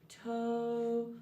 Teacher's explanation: the sound for O is made back rounded